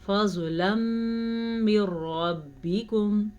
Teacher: زوات ساکن ہے لیکن پھر بھی آپ نے زوات کو پور پڑھنا ہے. زوات ہر صورت میں پور پڑھا جاتا ہے.